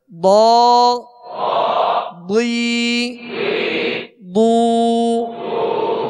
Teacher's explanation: مخرج ہے زبان کی کروٹ اور اوپر کے داڑھوں کی جڑ، یہ الٹی جانب سے آسانی سے ادا ہوتا ہے، تو اس کو پر پڑھ دیں، حروف مستعلیہ میں سے ہے۔